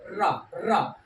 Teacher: लुंठित या प्रकंपित स्वर है